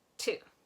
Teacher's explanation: the very tip of my tongue is almost kind of touching the back of my teeth, but a little bit higher, like at that point at the roof of your mouth, where the pink part right there kind of meets the very top of the back of your teeth.